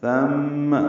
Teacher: میم مشدد پہ غنہ ہے، ثم، ثا کو نرمی سے پڑھنا ہے اور غنہ کرنا ہے میم مشدد پہ